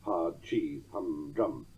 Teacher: ended with a spondee, which, as I mentioned earlier, is a double-stressed foot